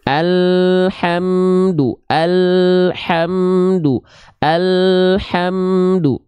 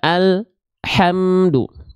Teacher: Antara al dengan ha tak boleh ada jeda hening di antara mereka. · dia terputus suaranya nama sifatnya bukan tawasud nama sifatnya adalah syiddah syiddah itu tertahan kuat tertahan suaranya sedangkan lam tidak syiddah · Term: tawassut